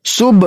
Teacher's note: با کے اوپر جزم ہے اور با حرف قلقلہ میں سے ہے اس لیے یہاں پہ قلقلہ کر کے پڑھیں گے